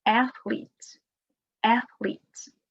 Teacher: the word athlete, the stress is on the first syllable